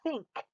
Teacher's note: if you don't put your tongue between your teeth you end up saying tink but tink is not a word think is a word i